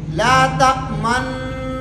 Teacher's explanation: پہلے بھی غنہ ہوگا، درمیان میں ہونٹ گول ہوں گے، آخر میں بھی غنہ ہوگا۔